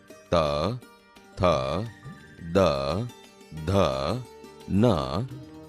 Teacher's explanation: બોલતી વખતે જીભ દાંતને અડે છે, આથી તે દંત્ય વ્યંજન છે.